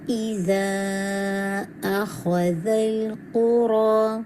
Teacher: ایزا کو اسٹریچ کریں گے 4 to 5 کاؤنٹ. مدل جائز منفصل ہے.